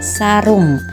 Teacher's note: vokal U, tinggi bawah belakang bundar pada kata sarung